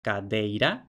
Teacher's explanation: la sonorización de la oclusiva intervocálica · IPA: [kaˈdei̯ɾa]